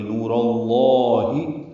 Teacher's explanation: را پر زبر ہے، را پر پڑھی جائے گی، اور اس را کی زبر کی وجہ سے لام اسم جلالہ بھی پر پڑھیں گے۔ نور اللہ، دو حرکات لمبا بھی کریں گے۔